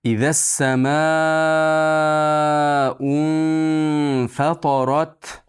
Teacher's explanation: Fatarat, fa ingichka, to yo'g'on, ro ham yo'g'on.